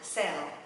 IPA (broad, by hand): sel